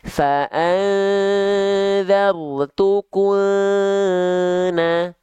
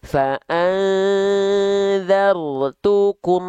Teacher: jelas dari bibir kum makanya rapat dia